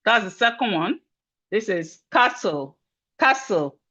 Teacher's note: The T in castle is silent.